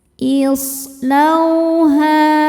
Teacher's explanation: Islauha. Sodnya ini punya sifat yang tidak punya lawan, namanya sofir. Sofir itu artinya berdesis, ya, seperti suara angsa.